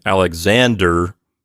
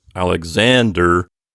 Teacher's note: pronounce it in our anglicized version of the name you know we say Alexander with the accent on the next to last syllable